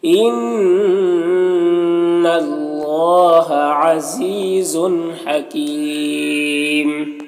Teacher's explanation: یہاں پر یا مدہ ہے اور اگر یہاں پر وقف کریں گے تو میم کا دو پیش سکون سے بدل جائے گا، تو پھر یہاں پر مد عارض وقفی ہوگا